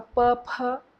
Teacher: P-ph, both are voiceless, but one is aspirated.